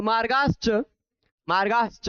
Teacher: च छ यानी तालु वाले हैं तो तालु वाला स आ जाएगा